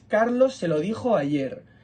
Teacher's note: son palabras átonas que suenan con menos fuerza Así que cuando hablamos las juntamos con dijo como si fuera una sola palabra